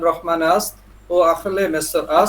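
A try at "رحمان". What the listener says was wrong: আচ্ছা রহমান আমরা বলি অগাই আমরা বলি রহমান কিন্তু ইরানিরা বলে রাহমান রাহমান ঠিক আছে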